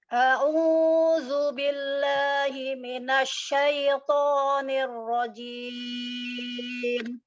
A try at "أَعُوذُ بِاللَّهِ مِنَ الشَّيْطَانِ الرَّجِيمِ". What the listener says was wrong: Coba dibuka lagi Umi lamnya. A'udzu billahi, billahi. Rahangnya dipegang. Ada pergerakan ya kalau kita membuka fathah di situ.